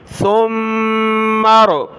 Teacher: سا پر زبان نکالیں, سیٹی کی آواز نہیں آنی چاہیے, سین کی طرح ہم نے اس کو نہیں پڑھنا